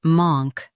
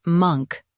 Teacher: For US, stress monk with a long ah. In UK, it's monk with a short u.